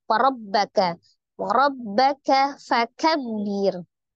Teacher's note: Warabbaka, ro-nya fathah, ro berharokat fathah dibaca dengan tebal. Baknya tasdid berarti tasdid itu adalah penggabungan antara dua huruf yang sama, di mana satu hurufnya adalah sukun dan satu hurufnya berharokat.